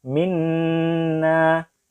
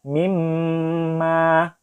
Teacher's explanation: Cara membaca gunnah adalah dengan kita tahan nanti ya. Huruf nun dan huruf mimnya agak lama, sekitar sepanjang 2 harokat ya.